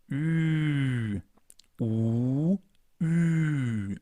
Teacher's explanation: We start with the U, the German version of U, U, and then we round our lips even more and place the tongue a little more at the front.